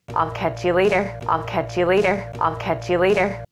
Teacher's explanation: do you hear the words catch and later receive the stress specifically the first syllable in leay for later I'll catch you